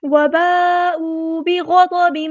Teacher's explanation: گے، حمزہ کی آواز کو واضح ادا کریں گے، وباءوا بغضب، غین کو ہم نے پورا ادا کرنا ہے، ہیوی لیٹر ہے ، بہت بھی یہاں پہ ہیوی لیٹر پورا ادا کریں گے،